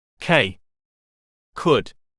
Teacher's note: Voiceless stop, back of tongue to back roof.